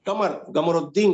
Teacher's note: یعنی سعودی مثال تو کسی کا نام ہے قمر الدین تو اس کو کہیں گے قمر الدین کہیں گے. لکھتے قاف ہیں لیکن پڑھتے ہیں گاف